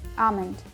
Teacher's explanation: I pronounce the L in almond.